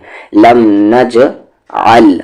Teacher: جیم پر قلقلہ آواز کو باؤنس کریں کیونکہ جیم پر ساکن سکون ہے ، جزم ہے، لم نج عل، آ کو لام عل، لم